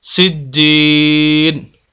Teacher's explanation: کھینچ رہے ہیں۔ اور اگر ہم یہاں پر وقف کریں سجین، آخری لفظ کو نون کو ہم ساکن کر دیں گے تو وقف ہو جائے گا